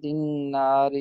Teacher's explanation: را جو پتلی پڑی جائے گی کیونکہ اس کے نیچے زیر ہے · دال کو نون کے ساتھ ملائیں گے تو اس کا ادغام ہو جائے گا